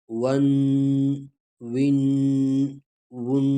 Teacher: آواز ناک میں چلا جاتا ہے اور گنگناتا ہے، اس کو کہتے ہیں تنوین۔